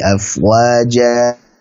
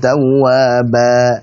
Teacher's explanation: Afwaja di situ dibaca 2 harakat sebagai mad iwad.